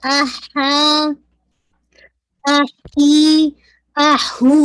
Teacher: तो हा आपका वस्तुल हलक से मिडल ऑफ थ्रोट से अदा होगा